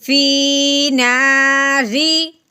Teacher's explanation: رو کے نیچے زیر ہو تو اس رو کو باریک پڑھتے ہیں